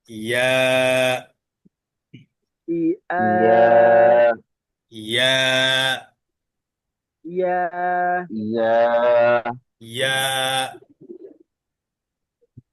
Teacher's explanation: ইয়া জিহ্বার মাঝখান উপরে তালুর সাথে লাগিয়ে নরম উচ্চারণ হবে ইয়াটা